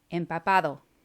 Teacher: the letter p is like much like the english p but it is a little shorter